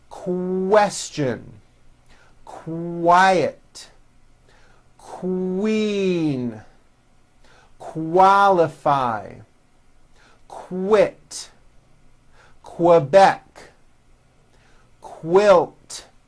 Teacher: Q sounds are made with the K sound, k, k, and the W sound, w, put together